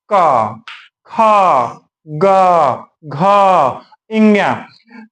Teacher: जैसे हमने कहा कि अकुह विसर्जनीय नाम कंठा अर्थात ये कंठ वर्ण है। जब इनका उच्चारण सबका उच्चारण करेंगे तो हमारे कंठ से आवाज आती है। क ख ग घ्या ये कंठ वर्ण हुई।